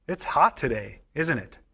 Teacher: we use falling intonation on a tag question when we expect the other person to agree with or confirm what we said